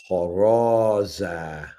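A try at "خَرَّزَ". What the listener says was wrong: So it's again with the shadda. It's like, kind of sounds like you're saying kharaza. Should be like kharra. Kharaza.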